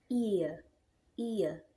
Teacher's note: we have short E followed by the schwa sound.